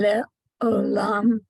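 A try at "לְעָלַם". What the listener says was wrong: Not O, there's no O. The alam.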